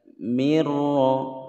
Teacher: yang ini nun sukun bertemu ro ini hukum bacaan Idgham bilagunnah dimasukkan tanpa didengungkan jadi langsung masuk ke huruf nun-nya tidak terbaca lagi mirroh begitu ya roknya tebal karena ro berharokatnya bertasydid ditekan Allah